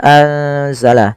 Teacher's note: Sama sebagaimana tadi anfusahum, yaitu dibaca dengan bacaan ikhfa, nunnya disamarkan ke huruf zai